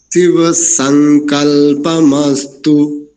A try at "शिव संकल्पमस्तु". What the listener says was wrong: अब ठीक आया उच्चारण।